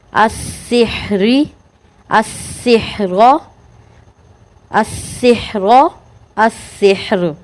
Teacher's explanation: را ساکن ہے، را ساکن سے پہلے ہا بھی ساکن ہے اور ہا ساکن سے پہلے کیا ہے؟ زیر ہے، تو اس کو بھی باریک پڑھیں گے